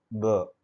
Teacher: so you will feel the vibration in the vocal cords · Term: voiced